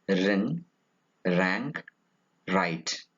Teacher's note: It is a voiced post-alveolar approximant.